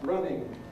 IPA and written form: ˈrʌnɪŋ (running)